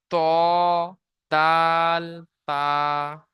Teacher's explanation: জিভের আগা এবং সামনের উপরে দুই দাঁতের গোড়ার সাথে লাগিয়ে উচ্চারিত হয়। জিভের আগা এবং সামনের উপরে দুই দাঁতের গোড়া। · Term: 11 নম্বর মাখরাজ